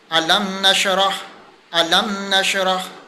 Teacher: अब हमने यहाँ पर इदार शफ़वी किया, ज़ाहिर करके पढ़ा, अलम नशरह करके पढ़ा, अलम नशरह यानी कि ज़ाहिर करके पढ़ा, गुन्ना नहीं किया